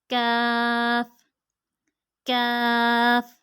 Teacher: ज़ुबान की जड़ और तालु के सख्त हिस्से से, ज़ुबान की जड़ और तालु के सख्त हिस्से से।